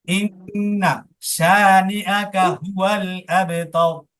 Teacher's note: প্রথম ইন্নাটা শুধু গুণ্য হবে, টান হবে না